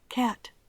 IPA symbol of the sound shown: æ